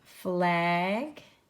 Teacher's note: my accent the way I pronounce that it sounds almost like a long a but it's flag is really a technically a short a word